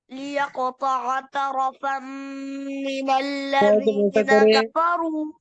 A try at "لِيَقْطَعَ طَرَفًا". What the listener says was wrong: लियक़ुत्तअ तरफ़न ता को दोनों ता को मोटा करे.